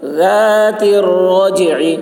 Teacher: ذال کی آواز باریک ہوگی